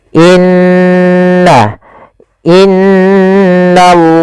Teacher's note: Maka in maka n ditahan sepanjang dua harakat tidak langsung dibaca innallaha tapi ditahan dulu sepanjang dua harakat untuk menyempurnakan bacaan gunahnya